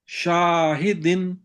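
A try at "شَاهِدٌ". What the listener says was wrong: عین کو نہیں، شان کو موٹا کر دیا آپ نے، پتلا کریں. شاہدن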